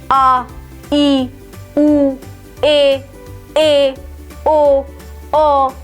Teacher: इनके उच्चारण में हस्व स्वर से दो गुना समय लगता है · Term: दीर्घ स्वर